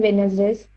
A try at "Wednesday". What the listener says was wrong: It's the pronunciation, the actual pronunciation of that word is Wednesday. Wednesday again, it's very Indian pronunciation. D is silent in that. The actual pronunciation is Wednesday.